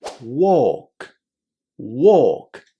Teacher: in walk, we say a long o. We forget about the L because it's silent and just connect the three sounds.